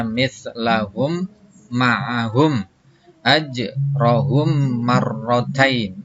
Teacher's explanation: Di mana ada mim mati ketemu dengan mim, ya, maka membaca mimnya harus dimasukkan kepada mim yang hidup serta memakai dengung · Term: idgham mimi